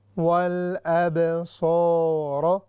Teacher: صاد heavy ہے، مستعلیہ میں سے ہے